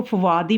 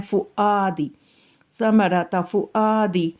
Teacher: واو کو ادا نہیں کرنا بلکہ حمزہ پہ جو زبر ہے اس کو ادا کرنا ہے